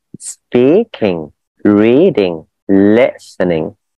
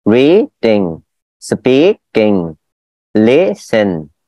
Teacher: cho dấu sắc vào từ đầu tiên và dấu a à vào từ đằng sau.